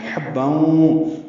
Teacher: حا وسط حلق سے ادا کریں گے